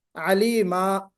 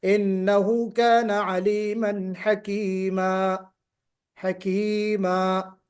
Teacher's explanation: تو تعویض کا مطلب یہ ہے کہ دو زبر کی تنوین کو، نصب کی تنوین کو، دو زبر کی تنوین کو ہم ایک مدی الف کے ساتھ بدل دیتے ہیں